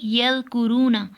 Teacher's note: ज़ाल की आवाज़ बारीक और नरम होती है